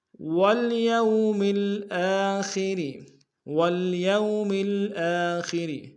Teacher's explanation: خا کو موٹا ادا کریں گے، را کو باریک ادا کریں گے